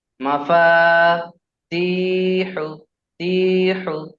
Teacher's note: ইয়া মাদ্দাকে একালি পরিমাণ টান দিয়ে পড়তে হয়, তাহলে আমরা এখানে একালিপ টান দেবো।